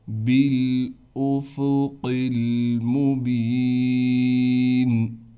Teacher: قاف کو موٹا کر کے پڑھیں گے، موٹا کرنے کے ساتھ قاف کو لام سے ملائیں گے۔ با کے بعد یا حروف مدہ ہونے کی وجہ سے با کو ایک الف کی مقدار کھینچیں گے